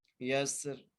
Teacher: اذا یسر، یا کو سین سے ملانا ہے، سین کو سیٹی سے پڑھنا ہے، را کو موٹا کر کے پڑھنا ہے۔ یسر، اس کو ایسے بھی پڑھ سکتے ہیں، والفجر ولیال عشر والشفع والوتر، ایسے بھی پڑھ سکتے ہیں۔